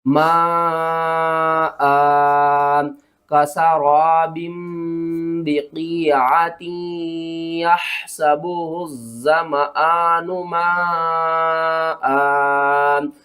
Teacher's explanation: مد متصل، اس کو آپ نے 5 الف کے برابر ہر حال میں کھینچ کر پڑھنا ہے